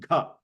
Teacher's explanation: the first letter is Gha, Mahaprana Gha, okay, like a GH